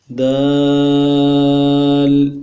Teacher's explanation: اگلا لفظ جو ہے دال ہے، اس کو بھی بغیر حرکات کے پڑھتے ہیں تنوین کے۔ دال، اس کو 3 الف کی مقدار میں کھینچیں گے، آخر میں لام ہے تو وہ نہ کریں گے۔